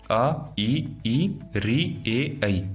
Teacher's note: जिन स्वरों का उच्चारण करते समय ओष्ठ वर्ताकार न होकर फैल जाते हैं, अवर्तमुखी स्वर कहलाते हैं।